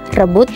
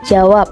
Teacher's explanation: fonem B dengan alofon B dan P dengan grafem B